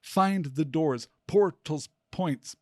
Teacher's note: It could be read as dactylic poetry, where 3 syllables grouped in a stressed, unstressed, unstressed order.